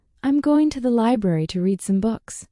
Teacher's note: Notice the stress on going, library, and books.